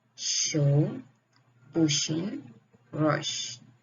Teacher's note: Sh is voiceless palatal fricative.